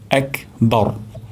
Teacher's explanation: র উচ্চারণ করব মোটা করে, অর্থাৎ জিহ্বার আগা আমরা উপরের তালুতে লাগবো, তাহলে রটি মোটা হয়ে যাবে। এক বর এমনটা হবে না, এক বার, বার হবে না, বর হবে।